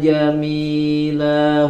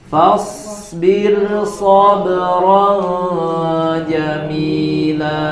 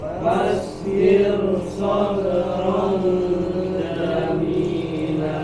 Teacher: huruf shnya ada di kata yang berbeda maka rnya tidak dibaca tebal tetap dibaca tipis